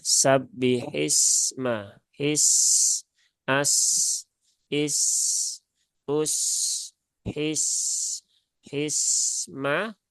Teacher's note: Sin sukun tidak ada sifat Qalqalah Maka jangan dipantulkan · alirkan saja bunyi sinin-nya jangan sampai dihambat ya jangan sampai ditahan karena nanti biasanya kalau ditahan di sini akan terjadi seperti percepatan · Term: rakah